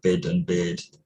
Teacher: bid and beard, for me, are distinguished only by length